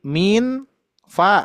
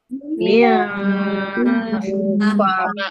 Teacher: Dengungannya masih sempurna, jaraknya masih sama dengan mim bertasydid. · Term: ikhfa samar